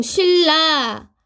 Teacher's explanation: 니은이랑 리을 같은 경우는 소리 나는 위치 같아요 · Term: 유음화